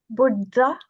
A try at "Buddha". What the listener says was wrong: That was dental, but just the the slight h sound coming out after it. Buddha.